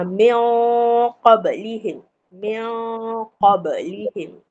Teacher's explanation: Kita sembunyikan bunyi nun tu. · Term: ikhfa hakiki